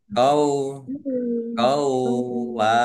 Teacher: Wawunya dibaca double. Ada tasdidnya. Dibaca kau dulu.